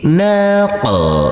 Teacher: huruf qaf yang bersukun ini wajib kita pantulkan karena huruf qaf adalah bacaan qalqalah